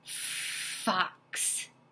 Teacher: our two top teeth on our bottom lip for an F and it is quieter than when we did the B what's